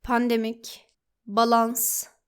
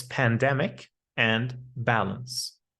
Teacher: It's the same as saying the word pandemic and balance. We don't pronounce it with an ah sound, but with an a sound.